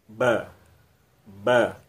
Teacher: antara ba dan ma itu letaknya di bibir ini, di ujung bibir ini, itu sama. Jadi ketika ketemu ba dan mim, bunyi ba jadi hilang, langsung masuk ke bunyi mim, ya.